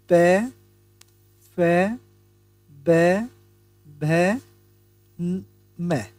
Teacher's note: प फ ब भ म इनका उच्चारण हम ओस्ट की सहायता से करते हैं